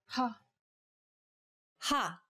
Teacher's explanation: saying this sound involves a forceful expulsion of air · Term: aspirated sounds